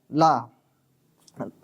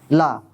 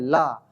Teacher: हमारी जीभ के दोनों तरफ से हवा निकल जाती है। ला, जीभ के दोनों तरफ से हवा निकल जाती है, उसके जीभ के पास से हवा निकल जाती है, इसलिए बोलते हैं उन्हें पार्श्विक व्यंजन।